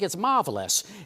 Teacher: they don't pronounce their R's. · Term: Mid-Atlantic accent